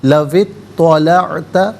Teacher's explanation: درمیان میں سے الف یعنی حمزہ کو حذف کیا جائے گا